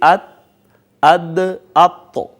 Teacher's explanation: مثال کے طور پر آپ دیکھیے تا، دال اور طا، یہ تینوں حروف جو ہیں ان کا مخرج ایک ہی ہے، یہ تینوں زبان کی نوک اور اوپر والے جو دانت ہیں ثنایا علیاء، ان کی جڑوں سے جب زبان کی نوک لگتی ہے تو یہ تینوں ایک ہی جگہ سے ادا ہوتے ہیں۔ ان کا مخرج ہے نوک زبان اور ثنایا علیاء کی جڑیں، جیسے ات، اد، اط، تو ایک ہی جگہ سے یہ ادا ہوئے۔